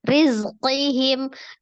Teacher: zainya ada sifat as-safir. Ada desisan, alhams, mengalir napas, rohah, mengalir suara ya.